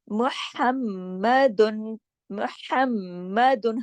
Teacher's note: ہا کو گلے سے پڑھنا ہے، میم پہ تشدید ہے، سختی سے پڑھا جائے گا